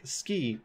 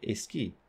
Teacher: In English, we can say something like ski, while in Spanish, they would say a ski. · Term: Spanish A apenthesis